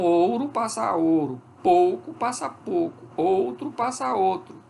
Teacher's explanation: Monotongação, fenômeno mais comum do que a ditongação. Então, é a redução do ditongo que passa a ser, na fala, uma única vogal